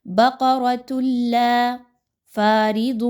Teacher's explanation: بقرۃ لا فارض، فا الف زبر فا الف مدہ ہے، 2 حرکات کے برابر پڑھیے، را کے نیچے کیونکہ زیر آ گئی ہے اس را کو باریک پڑھا جائے گا۔